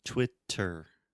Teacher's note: they will say Twitter with a true T like table time